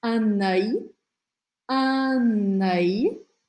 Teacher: eu grudo o som do n com o som do a do começo dessa palavra